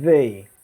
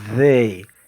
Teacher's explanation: você coloca a ponta da língua entre os dentes e meio que sopra